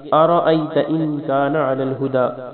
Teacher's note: را کو موٹا پڑھنا ہے، ان پہ غنہ کرنا ہے